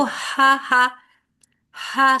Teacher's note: سانس کے ساتھ خوا نہیں، خا کی طرف نقطے والی خا کی طرف جا رہی ہے آپ کی آواز